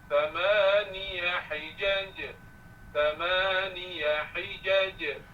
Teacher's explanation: Pastikan bunyi qalqalah je, bukan sh.